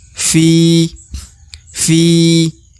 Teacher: maka Fi harus dipanjangkan dua harakat ya karena di depannya ada huruf Ya Sukun